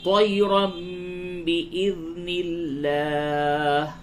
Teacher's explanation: اس لفظ اللہ کے لام کو باریک پڑھیں گے کیونکہ اس سے قبل زیر ہے